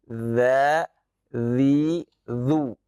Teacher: Bagaimana huruf zal itu dari ujung gigi seri atas dengan ujung lidah ya.